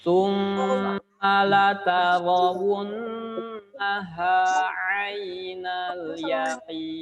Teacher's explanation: Sum masuk ke hidung suaranya. Jangan lupa ya, masuk ke hidung.